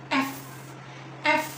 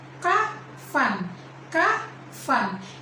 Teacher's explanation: Yang kedua, ada kolom labiodental dan baris frikatif. Labiodental adalah menggunakan gigi bagian atas dan bibir bagian bawah, sedangkan frikatif adalah membuat suara seperti mendesis. Terdapat pada bunyi F, F, dan contoh katanya yaitu kafan, kafan.